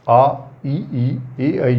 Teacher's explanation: आ बोलने पर मुख रंध्र पूरा खुल जाता है, ई बोलने पर थोड़ा खुलता है, आई बोलने पर वो थोड़ा 3/4 के करीब खुलता है।